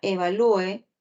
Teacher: en la palabra evalúe la mayor fuerza de voz está en la u